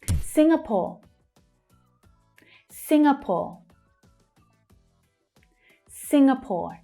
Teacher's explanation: It's the first syllable that's stressed. Sing, we have that consonant sound.